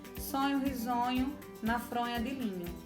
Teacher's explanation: Percebemos que houve a repetição de sons vocálicos aí do O, né? Do O, que é um O fechado, do sonho risonho.